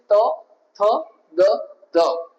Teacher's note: Dental ઉપરના ટીથને તમારી જીભ ટચ થાય છે ત્યારે આ શબ્દનું ઉચ્ચારણ થાય છે ત થ દ ધ.